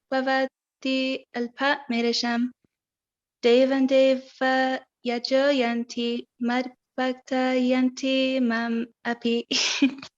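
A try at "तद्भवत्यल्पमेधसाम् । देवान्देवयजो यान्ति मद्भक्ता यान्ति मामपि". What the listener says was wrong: Very nice, very nice.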